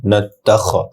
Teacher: খয়ের উচ্চারণ খানা হয়ে খ হবে, টান নেই। জুল জাল নরম হবে, জাল লামের সাথে যুক্ত হবে।